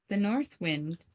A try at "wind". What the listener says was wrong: There's sort of some kind of a drag there. Yeah, compared to wind. Wind. Wind.